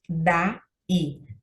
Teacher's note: Daí. Temos aqui duas sílabas, hiato, porque temos duas vogais sendo separadas, cada uma ficando em uma sílaba, e o i é tônico. Um dissílabo oxítono, então, sim, ó, então, aqui está a sílaba mais forte, a última, sem acento gráfico, porque o tio não é um acento gráfico, ele apresenta apenas uma tonalidade.